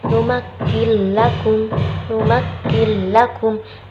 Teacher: Ada nun sukun bertemu dengan lam, yaitu idgham bila gunnah. Karena ada nun sukun bertemu lam dan bacanya itu tidak dengung, bila gunnah tanpa dengung.